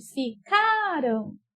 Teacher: Então, quando ela está no passado, ela é uma paroxítona, porque a sílaba mais forte é a penúltima